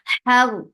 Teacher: Ha, give hums, give hums in ha, and ha should be from middle part of your throat